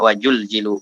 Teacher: Kadang orang Sunda susah dia bilang Z soalnya. Bilang Z. Z jadi jet kadang-kadang.